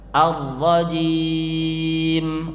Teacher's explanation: ra-nya jangan terlalu banyak getarannya.